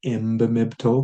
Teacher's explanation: When you have a B, people tend to switch that N to an M to make the like imbimibto because the mb sounds really good in Ojibwe.